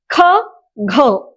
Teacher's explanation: अब देखिए अब अगर आप क की संधि करेंगे तो बहुत साधारण रूप से हम लोगों को क का पैर क अधिक अ बराबर जो है वो पूर्ण क बन जाता है, लेकिन अगर आप ख की संधि करेंगे तो आपको पता चलेगा कि क अधिक ह अधिक अ मिलाकर ख बना है। तो उसमें दो व्यंजन और एक स्वर होने के कारण जो है वो महाप्राण बन गया है, लेकिन उसी क में एक व्यंजन और एक स्वर होने के कारण वो अल्प प्राण हो गया।